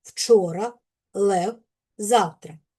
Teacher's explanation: Приголосний звук в не можна оголошувати. Його треба вимовляти ніби короткий голосний в. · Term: у нескладовий